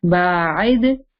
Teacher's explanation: make the ayn clear, and the dal has a bouncing sound